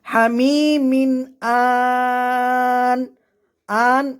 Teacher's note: এখানে মধ্যে আরজি তিনালি পরিমাণ টান হবে